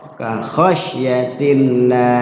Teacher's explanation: lafzul Allah dibaca tarqiq karena bertemu dengan huruf ya hijaiyah yang berbaris kasrah